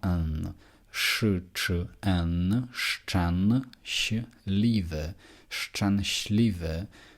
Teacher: А тепер у нас тверда ч в слові шченшлів